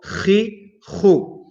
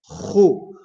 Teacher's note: the top part of the throat is where we pronounce kha from